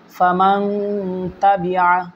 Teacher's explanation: এখানের মধ্যে নুন সাকিনকে গুন্নাহ করে পড়েছি। যখন তা আমি পড়ছি তখনই কিন্তু গুন্নাহ হয়ে গেছে, কিন্তু তা উচ্চারণ করার আগে যেমন মিম, নুন জবর মান গুন্নাহ হয় নাই, কিন্তু যখন মিম, নুন জবর মান, তা জবর তা, মাং তা এভাবে হয়েছে।